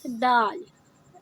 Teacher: دال بالکل normal easy letter ہے، ہم یہ سینٹر سے نکالتے ہیں زبان کے